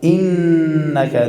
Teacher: نون شد داره دو حرکت غنه، بعد از او فتحی نون را میگیریم.